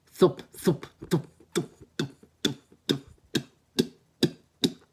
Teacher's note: Your tongue placement on this is between your lips, like a TH, like if you're saying the TH sound in the English language, th, right?